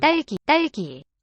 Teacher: This is the tense one. It will have no aspiration.